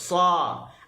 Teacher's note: Maka kita sebut sa, angin tetap keluar, suara tetap keluar, dan safir tetap keluar, cuma yang ni jadi tebal hasil daripada pangkal lidah terangkat, hujung lidah terangkat · Dan huruf sad disebut pangkal lidah terangkat, hujung lidah terangkat. Dia menyebabkan ada taqa'ur fil lisan, ada lekukan pada tengah lidah.